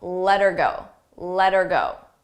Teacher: You don't hear the H, but I also attach it to the word before. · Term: link those sounds together